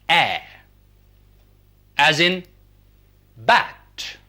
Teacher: another vowel which is lower vowel that is the tongue moves low